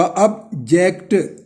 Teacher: ऑब्जेक्ट जब noun होगा तो अब जो है ओ बी पर, उस पर जो है आपने जोर देना, ऑब्जेक्ट जब वर्ब के तौर पे इस्तेमाल होगा ऑब्जेक्ट, तो फिर जो है जेक्ट पर जो है आपने जोर देना है